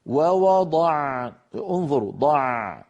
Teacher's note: هل لاحظتم جريان الصوت في العين؟ ولكنه جريان جزئي